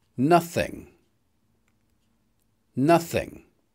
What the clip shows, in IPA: ˈnʌθ.ɪŋ